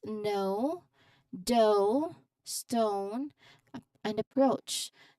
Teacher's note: smoothly gliding from the first part of the sound to the second maintaining lip rounding · Okay, this is a gliding vowel for this particular you know div thong. It's a gliding vowel that starts with a midback rounded vowel sound